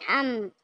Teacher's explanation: अम दोनों होठ बंद कर लेंगे तो खोलेंगे नहीं। अम ऐसे करके रोक लेंगे। यहां पर डबल आवाज़ नहीं आनी है।